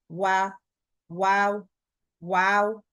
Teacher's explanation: വാവ് പറയുമ്പോൾ രണ്ട് ചുണ്ടുകൾ സർക്കിൾ ചെയ്തിട്ട് വേണം പറയാൻ